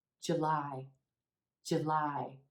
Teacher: here we have a two syllable word with emphasis on the second syllable